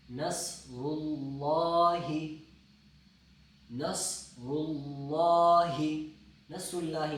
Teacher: تو نصر اللہ، صاد بھی موٹا ہے، را بھی موٹا ہے، اور پھر لفظ اللہ بھی موٹا ہے